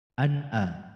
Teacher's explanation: Nun sukun bertemu hamzah. Tidak boleh samar. Tidak boleh dengung. Tidak boleh tawalud. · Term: idhar